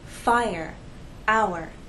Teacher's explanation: the vowel sounds remain separate but we still need to have a smooth gliding a smooth connection from the first vowel sound into the second